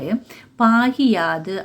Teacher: தனது ஒரு மாத்திரை அளவில் குறுகி ஒலிக்கும் இகரம் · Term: குற்றிய லிகரம்